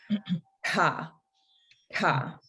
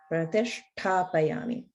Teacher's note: the ta is the retroflex ta. So it's a different T sound, but it's also mahaprana.